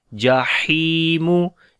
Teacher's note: Ha we read from the middle of the throat, and also we long because there is ya madda